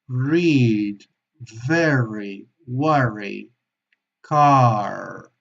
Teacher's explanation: una r mucho más suave que la española no tiene esa vibración de la española es mucho más suave y tocándola a la parte de arriba